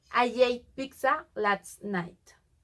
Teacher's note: we can tell the intrusive J between I and ate.